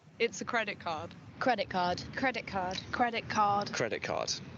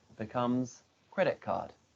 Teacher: In fluent speech, when one word ends in a vowel sound followed by a t, and the next word begins with a k sound, the t changes to a k. So credit card becomes credit card. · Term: assimilation